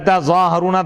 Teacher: فیہ ادغام التاء فی الاصل فی الظاء، تظاہرون تھا، تظاہرون بھی پڑھا گیا، تظاہرون بھی پڑھا گیا.